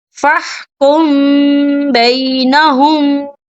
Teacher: اکفا شفوی ہوگا اور ہم یہاں غنہ بھی کریں گے